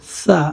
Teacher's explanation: জিহ্বার আগা সামনের উপরে দুই দাঁতের আগার সাথে লাগিয়ে আমরা উচ্চারণ করব সা